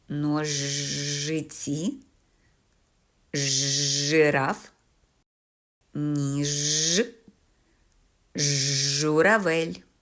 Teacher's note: вдається повітря затримується глибоко в роті біля задньої частини язика Отож звук Ж твердий приголосний і м'яким не буває ніколи